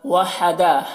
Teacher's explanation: ہا کو حلق سے ادا کریں گے، دال میں مد ہے تو اسے زیادہ کھینچیں گے